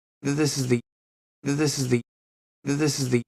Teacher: Notice there's not a lot of volume in my voice. There's almost no pitch change. This is the, because they're all unstressed.